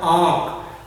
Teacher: इसमें जो है हवा मुंह और नाक से निकलती है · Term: अनुनासिक